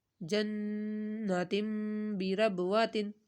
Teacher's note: نون کے اوپر تشدید ہے تو نون کے اوپر غنہ